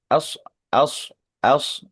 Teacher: setiap mad ar sukun atau qutila ashabul ukhdud anaratil waquud nah konsisten kemudian yang mungkin kita agak mundur sedikit di kata ashabu as as di sini kita menjumpai tipisnya fathah hamzah atau fathahnya alif kemudian bertemu dengan shad sukun yang tebal